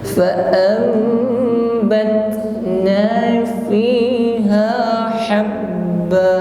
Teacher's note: Fa'am bat ada ta sukun bat ditekan lalu dia mengeluarkan nafas ya. Jadi ta ini ketika disukun dia terasa aliran nafasnya